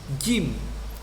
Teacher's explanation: Jim pakai ujung lidah, tidak begitu. Kalau makhrajnya orang Arab mengucapkan huruf jim itu ada di tengah-tengah lidah.